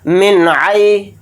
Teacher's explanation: عین اظہار حلقی کے حروف میں سے ایک حرف ہے، تو نون کی آواز کو ظاہر کر کے بلا غنہ کے جلد پڑھیں گے